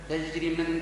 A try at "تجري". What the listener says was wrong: تجري مدها، تجري، خلق للجيم، تجري